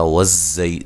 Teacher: نون کو لمبا نہیں کرنا، زبر زیر پیش کو لمبا نہیں کیا جاتا۔ والزی زا کو زور سے ادا کرنا ہے، سیٹی سے ادا کرنا ہے